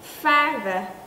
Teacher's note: cũng đưa cái lưỡi ra nữa Tuy nhiên cổ chúng ta run nói giống như âm đờ của tiếng Việt